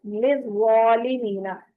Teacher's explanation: واو کی آواز نہیں آنی چاہیے بیچ میں